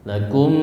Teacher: Spesial pada mim temu mim maka dia jadi gunnah ya. Lakum, ditahan dulu ya.